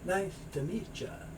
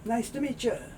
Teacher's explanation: This T and Y sound often gets a ch.